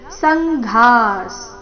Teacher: ಘ ಮಹಾಪ್ರಾಣ ದೀರ್ಘ ವಿಸರ್ಗದ ಉಚ್ಚಾರಣೆ ಅರ್ಧ ಸ ರೀತಿ